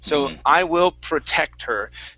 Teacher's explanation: you're going to pronounce a clean R, pushing your tongue down. Okay, so it's not hitting the top of your mouth.